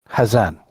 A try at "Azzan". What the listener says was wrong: The accent is not on the Z's. It's on the A. AZZAN.